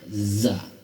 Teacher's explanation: Za itu lidahnya ditarik ke belakang sedikit, dipangkal gigi. Za sambil digetarkan.